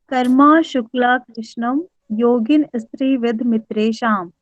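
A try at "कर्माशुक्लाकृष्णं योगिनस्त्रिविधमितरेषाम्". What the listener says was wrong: नहीं, स्त्री नहीं यहाँ बोलना है, यहाँ बोलना है योगिनस। योगिनस त्रिविध। योगिनस, ना के साथ स बोलना है और त्रि अलग बोलना है। योगिनस त्रिविध, त्रिविध माने 3। हाँ, त्रिविध मितरे साम।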